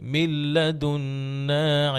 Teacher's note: লাম এবং রতে কিন্তু কখনোই গুন্নাহ নাই। এটা ঈদগাম আছে। ইদগাম উইদাউট গুন্না।